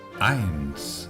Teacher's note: Cuando tengamos un diptongo EI, siempre lo pronunciaremos AI.